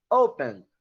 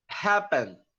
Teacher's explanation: Open, olha só, o verbo, a pronúncia, a gente não vai pronunciar open, você vai pronunciar open, ou seja, a sílaba tônica, a sílaba forte é a primeira sílaba